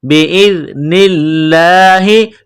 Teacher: ذال پڑھتے وقت زبان تھوڑی سی باہر نکالیں گے